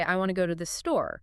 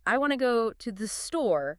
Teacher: A native speaker would likely say something more like, "I want to go to the store." significantly shortening those unstressed words to and the · In natural English rhythm, the main stress falls on the important content words want, go, store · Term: reduced